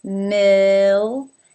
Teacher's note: The first syllable has an I as in sit, mill, and it ends in an L. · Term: dark L